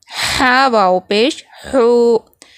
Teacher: حلق کا درمیان والا حصہ جہاں سے ہا نکلتا ہے